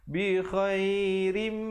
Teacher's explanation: Di situ ra-nya tanwin di bawah dibaca nipis bertemu dengan mim, hukumnya idgham bi gunnah.